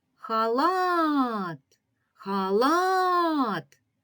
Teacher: Ми добре чуємо що останній склад тобто другий ми вимовляємо сильніше протяжніше збільшую силою голосу Отже другий склад наголошений наступне слово називає предмет